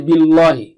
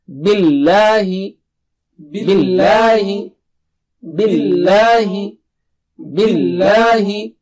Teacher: Don't make the lam thick here. Don't say billahi. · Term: normal lam